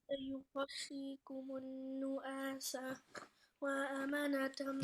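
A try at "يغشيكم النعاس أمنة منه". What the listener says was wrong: वाव नहीं है,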